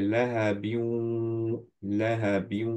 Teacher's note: ওয়াওটাকে ধরে রাখবো, ওয়াওয়ের মধ্যে গুন্না দিব